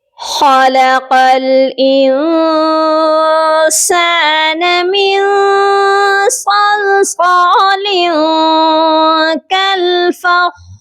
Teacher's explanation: خا کو بھی موٹا پڑھیں گے اور قاف کو لام کے ساتھ ملا کر پڑھا جائے گا، اور قاف کو موٹا کر کے بھی پڑھیں گے۔